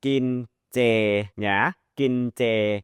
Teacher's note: So that's why a lot of places like this would be romanized by ch. So you can think of the Thai j sound as the unaspirated ch, as the j. It's almost like a ch, but it's more like a j.